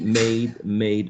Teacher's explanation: starts in the sound a which is mid front a short sound and it glides into a high front sound which is also short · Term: diphthong